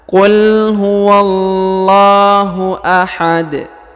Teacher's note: karena huruf da berada di ujung ini berharakat sukun maka dia dibaca pantul